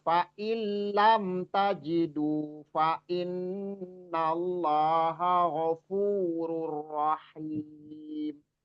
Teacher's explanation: Satu ini ya, yang fa'il lam, nun sukun bertemu lam. Nun sukun bertemu lam itu idgham bila gunnah. Jadi idgham itu artinya memasukkan atau mentasdidkan huruf nun ke huruf lam.